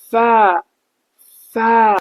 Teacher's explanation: فا کو آپ 2 سیکنڈ تک کھینچ سکتے ہیں